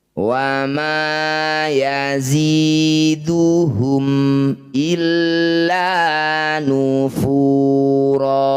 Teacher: Disebut bacaan namanya izhar syafawi. Bunyi mim baca jelas. Syafawi bibirnya harus rapat, tidak usah dengung.